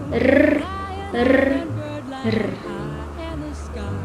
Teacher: Next is the letter R. It is called the alveolar trill